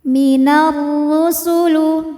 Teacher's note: Kemudian ada hukum alif lam syamsiyah. Karena alif lam menghadapi huruf syamsiyah yaitu ro, maka alif lam tidak dibaca atau biasa disebut dengan idgham syamsi, dimasukkan, diidghamkan.